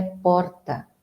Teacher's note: Em São Paulo, a pronúncia é porta, com esse R vibrante.